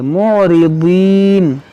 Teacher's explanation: دیکھیے معرضین، یہ ضاد ہے، موٹا کریں گے،